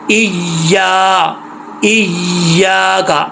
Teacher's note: جو زبان کا درمیان ہے وہ اوپر والے تالو کی طرف اٹھے گا، لگے گا تالو کے ساتھ، تو یہ یا پڑھا جائے گا